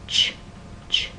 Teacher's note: that not very common there's CH which is an africat stop you start with a stop sound T and then you move on to a fricative